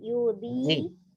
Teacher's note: Sisi lidah menyentuh geraham atas.